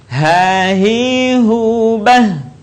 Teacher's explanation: Huruf H sekali lagi keluar dari tenggorokan terjauh.